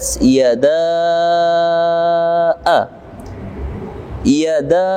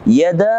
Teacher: Namun yang jaiz di sini yada boleh 2 harokat, 4 hingga 6 harokat kita baca. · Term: mad jaiz